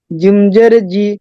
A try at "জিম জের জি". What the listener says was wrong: জিম, জিম হলো 3 আলিফ টান। জিম হরফটা স্বতন্ত্রভাবে 3 আলিফ টান। তো আমাদের পড়তে হবে এভাবে, জিম জের জি। হরকতটা তাতে উচ্চারণ করতে হবে, কিন্তু হরফ যেটা 3 আলিফ টান সেটা 3 আলিফ টান দিতে হবে, যেটা 1 আলিফ টান সেটা 1 আলিফ টান দিতে হবে।